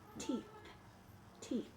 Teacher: that th sound does not have vibrations in my throat